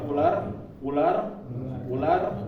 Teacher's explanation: bergetar Nah karena huruf ro ini mempunyai sifat atakrir atau dia ketika mengucapkannya lidah bergetar seperti kita ngomong bahasa Indonesia